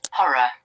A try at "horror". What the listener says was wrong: American says R though, but in this case I can't hear any R.